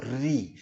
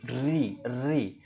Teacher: जीभ जो जीभ है वो ऊपर के तालू से टकरा कर एक कंपन करती है ना? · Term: मूर्धन्य